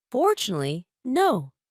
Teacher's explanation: We have five syllables there. The first one is stressed four and the last one is stressed no. But now we have three syllables in the middle that don't have stress. · That had just one unstressed syllable in the middle. So, those three unstressed syllables in fortunately, no. have to be really fast. They have to be reduced. · The first one is stressed for, and the last one is stressed no.